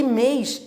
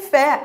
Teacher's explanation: O que eu quero dizer é que mês é tônico, mas tem timbre fechado. Em fé é tônico também, só que com timbre aberto.